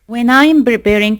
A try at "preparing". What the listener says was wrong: Notice when I'm preparing, that's what I'm talking about. When I am preparing, so you need to pronounce the P with more aspiration so it doesn't sound like a B consonant.